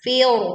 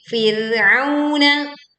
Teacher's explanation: sukun didahului fathah dibaca tipis, bukan fir, tetapi Fir'auna